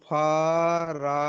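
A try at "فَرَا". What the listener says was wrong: আলিফ যাবার রা নয়, র আলিফ যাবার র। ফা যাবার ফা, র আলিফ যাবার র, ফার।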